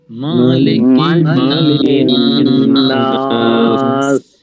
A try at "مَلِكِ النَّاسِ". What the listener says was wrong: মিমতে কিন্তু টান নাই মালিক নাস